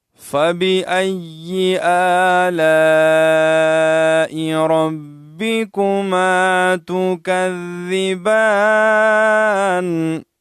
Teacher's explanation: فَبِأَيِّ یا جو ہے مشددہ ہے، اس کو مشدد ادا کریں گے. اور حمزہ کے اوپر کڑی زبر ہے، 1 الف کی مقدار کھینچیں گے.